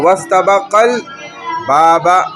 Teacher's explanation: حمزہ وصل درمیان کلام میں آنے کی وجہ سے حذف ہو گیا ، جب واستبقل کے ساتھ مل گیا تو درمیان میں آ